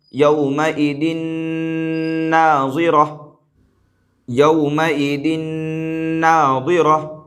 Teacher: نون آ رہا ہے، لہٰذا یہاں پر ادغام مع الغنہ ہوگا، زال کو نون سے ملا کر کے پڑھیں گے اور اس طور پر ملائیں گے کہ غنہ بھی ہو